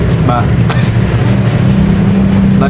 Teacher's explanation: Ba itu keluarnya dari bibir atau syafatain